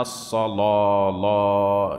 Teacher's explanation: وهي ألف يخالط لفظها تفخيم يقربها من لفظ الواو، كما كانت الألف الممالة ألفا يخالط لفظها ترقيق يقربها من الياء، فهي نقيضة الألف الممالة. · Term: الألف المفخمة